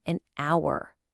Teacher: The word starts with the letter H, but it's totally silent. The first sound you actually hear is ow, which is a vowel sound.